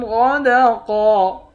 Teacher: غین اور قاف ان دونوں حرف کو موٹا پڑھیں گے، یہ دونوں موٹے حرف ہیں